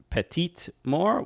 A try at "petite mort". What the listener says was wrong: Morte. You pronounce letters before an e.